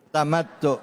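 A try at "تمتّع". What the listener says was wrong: Tamattu'. Ujungnya pakai ain. Coba Bu, tamattu'.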